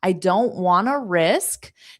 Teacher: want to naturally in spoken English will become wanna